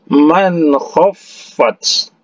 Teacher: Kha ini adalah salah satu huruf izhar. Jadi dijelaskan man khaffat, jangan didengungkan.